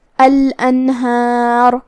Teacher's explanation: یہاں ہم نون کو ظاہر کریں گے اور بغیر غنہ سے یہ حکم کو ادا کریں گے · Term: اظہار